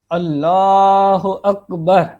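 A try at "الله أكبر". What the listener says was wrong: جی ابھی بھی آپ ہو پڑھ رہے ہیں تو اسی طریقے سے آپ فوکس کریں گے تو انشاءاللہ اللہ اکبر.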